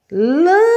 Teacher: A sílaba que eu pronuncio com mais força, que eu intensifico mais, é o lã. Então, essa é a minha sílaba tônica.